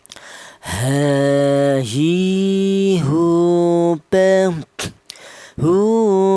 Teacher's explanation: Huruf ha kelnya huruf berasal dari pangkal tenggorokan